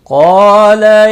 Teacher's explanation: قال إنه يقول إنها بقرة صفراء، قاف اور الف دونوں پر پڑھے جائیں گے۔ قاف مستعلیہ ہے، مستعلیہ کے بعد الف آیا ہے اس لیے پر پڑھا جائے گا۔ الف مدہ بھی ہے، ایک الف کے برابر کھینچ کر پڑھیں گے۔